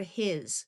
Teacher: Here is the word his, where S has the Z sound.